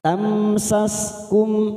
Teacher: mim sukun bertemu sin idhar safawi, kita baca jelas tanpa mendengung